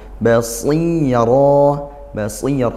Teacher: pangkal lidahnya naik tapi karena dia kasrah tetap tebal karena dia huruf idbaqo naik pangal lidah sampai tertutup rongga mulutnya sih seperti itu tanpa pakai bibir basya bukan seperti bias seperti itu.